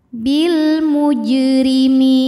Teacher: Bil muj, huruf jim sukun dihukumi dengan qalqalah sughra, sebab ada huruf qalqalah yaitu jim yang sukunnya ini sukun asli dan ada di tengah bacaan kita, maka jimnya kita pantulkan dengan pantulan yang kecil